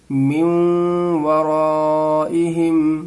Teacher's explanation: من میں آواز کو ناک میں رکھیں گے تھوڑی دیر